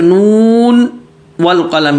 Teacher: اسی طریقے سے نون والقلم، یا نون کے جو نون آخر میں آ رہا ہے اس کو نون کو ظاہر کر کے پڑھیں گے، اور آگے والقلم میں اس کو ادغام نہیں کریں گے